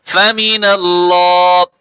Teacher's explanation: টান হবে এবং লাম মোটা হবে